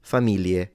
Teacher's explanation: you pronounce it the northern way, which is an L